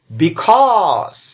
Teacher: দ্বিতীয় যে সিলেবলটি সেটা শুরু হয়েছে সি বর্ণটি দিয়ে, আর দ্বিতীয় সিলেবলটি এখানে স্ট্রেসড সিলেবল, তাই এখানে এই সি এর উচ্চারণ খ এর মতো করে করতে হবে।